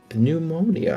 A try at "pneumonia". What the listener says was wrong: Pneumonia, you're right. The P is silent, it's just pneumonia. It's only PP to you.